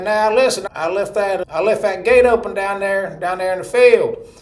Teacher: So my cousin Tommy, he would talk like this, and he'd say, "Now listen, I left that gate open down there in the field." So Tommy, you'd think you might call his voice nasal, but ain't none of that coming through the nose. All that's coming right through my mouth. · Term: twangy